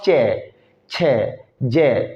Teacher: तालू कहते हैं मुंह की छत होती है ऊपर की तो ऐसे वाले वर्ण जिनको बोलते हुए जीव छत की तरफ जाती है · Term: तालव्य